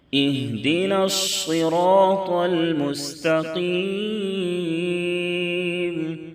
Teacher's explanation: صاد کو مکمل پر پڑھیں گے کیونکہ صاد حروف مستعلیہ کے ساتھ حرفوں میں سے ہے، صاد کو اگر پر نہیں کیے تو سین سے بدل جائے گا اور لحن جلی واقع ہو جائے گا · اہدنا، نون کے بعد 2 الف لکھے ہوئے ہیں، اس کے بعد لام ہے، یہ تینوں حروف نہیں پڑھے جائیں گے، نون کو سیدھا صاد سے ملائیں گے۔ صاد کو مکمل پر پڑھیں گے کیونکہ صاد حروف مستعلیہ کے ساتھ حرفوں میں سے ہے